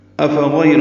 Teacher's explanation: حمزہ کو اقصى حلق سے ادا کریں گے